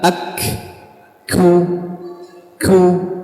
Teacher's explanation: samarnya suara pada sebuah huruf dan tidak bergetarnya pita suara, kemudian mengalirnya banyak dari udara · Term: sifat hamas